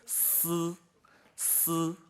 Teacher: Alors, so the apical vowel in Standard Mandarin sounds like this: s, s. So in the middle of the apical vowel, there's not too much of frication